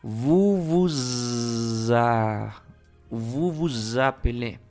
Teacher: Aquí la S va a sonar vibrante, va a sonar como una Z. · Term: liaison